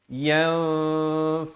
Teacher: ikhfa hakiki, nun mati bertemu fa, samarkan